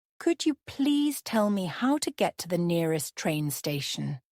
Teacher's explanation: Notice the rising intonation at the end of the question.